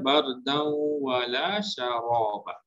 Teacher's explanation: Seolah-olah waw itu ada tanda sabdu.